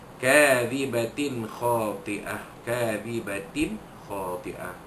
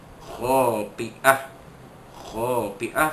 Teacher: Kadhibatin khati'ah, kadhibatin khati'ah, ta pada kadhibatin, ta bulat ta marbutah itu bertemu dengan huruf kha, maka hukumnya izhar halqi, bukannya tapi bertemu dengan huruf kha, maka dizahirkan, dinyatakan bunyi tanwin yang bertemu dengan huruf kha itu, tanpa dengung